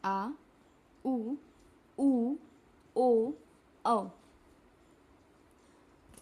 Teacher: इनको बोलने में हमारी जिभ्या का पिछला भाग मदद करता है।